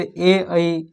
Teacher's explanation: नासिक, यानी कि नाक द्वारा बोला जाता है, अनुनासिक इसका नाम दिया गया है। फिर ए ऐ कंठ और तालु दोनों भाग लेता है, तो कंठ तालु भी कहलाएगा।